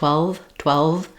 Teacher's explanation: What you want to do is close your teeth to your lip, V, and that's a continuing sound, 12. And also we want to make sure that we have the V sound is voiced.